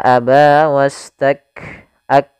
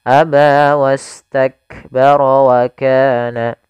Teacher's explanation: Syiddahnya harus tampakkan dulu baru hamznya, tidak bisa bersamaan. Maka aba wastak ak, mat itu apa namanya, syiddahnya dulu, tertahannya suara baru nafas, ya. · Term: syiddah dan hamznya